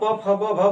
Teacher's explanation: जब आप प फ ब भ बोलते हैं तो जब आपका मुख का जो ओट्स होता है आपस में क्या करते हैं, टकराते हैं। आप बंद कर लेंगे तो आपकी ध्वनि नहीं आएगी, प नहीं बोल पाएंगे।